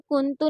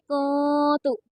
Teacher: नून साकिन की आवाज़ को छुपाई जाएगी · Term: इख्फा